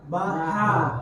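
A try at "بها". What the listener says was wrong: Pas hurufnya, makronya, tapi nanti sifatnya nggak kena ya. Jadi ha itu di sini dia, pangkal. Baha. Jadi caranya biar mudah, mulutnya kita buka, lidahnya dilempengin. Lempeng tuh bukan dikeluarkan, apa?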